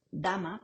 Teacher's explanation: dental sonoro, como en dama